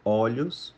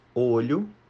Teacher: Então veja que o o fica aberto e olho no singular fica um ó fechado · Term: plural metafônico